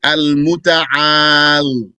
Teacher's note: you can pronounce it al-muta'al by dropping the ya.